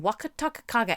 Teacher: I really like the way it goes from the tip of your tongue to the back of your tongue